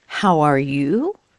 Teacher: Your intonation goes up.